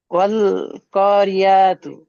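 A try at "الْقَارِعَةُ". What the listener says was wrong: ওয়াল ক নই, আল ক। কপটি টান হবে, বাকি কোনো জায়গায় টান হবে না। আল করিয়াতু।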